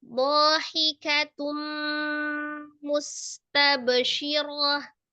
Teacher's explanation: Tun tanwin ya ketemu dengan huruf mim. Idgham bi gunnah ditasdidkan ke huruf mim disertai dengan gunnah yang paling sempurna.